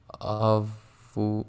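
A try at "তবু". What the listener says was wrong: No, to. It is a to. It is to. A consonant. Tobu.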